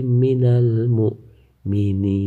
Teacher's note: Sebab mad tabi'i bertemu dengan huruf nun yang mati karena waqaf. Cara membaca huruf nun pertama dibaca panjang 1, 2 atau 3 alif. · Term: mad arid lis sukun